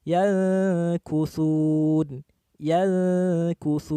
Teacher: Ikhfa lebih pendek daripada gunnahnya. Cara bacanya cenderung seperti ang jika bertemu dengan salah satu dari 2 huruf, yakni huruf qaf dan kaf. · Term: ikhfa adna